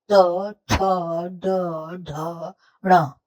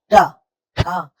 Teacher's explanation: आपकी जीभ हर बार मुंह के छत पर यानी कि तालू में छूती है